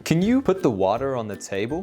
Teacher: you can hear that I pronounce the T in table but nothing else